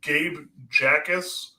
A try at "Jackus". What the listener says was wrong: it's actually that initial J is silent, so it's Akis, which is a very interesting pronunciation.